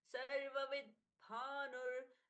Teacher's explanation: जब हम बोलते हैं तो स्पष्टता से द नहीं सुनाई देना चाहिए सिर्फ आघात